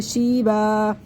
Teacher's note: یہ اصل میں دو زبر تھے، دو زبر میں سے وقف کی صورت میں ایک زبر ختم ہو جائے گا، ایک زبر باقی رہ جائے گا. الف سے پہلے جب زبر ہو گیا الف مدہ بن جائے گا، اس کے ایک الف یہاں پر کھینچ کے پڑھیں گے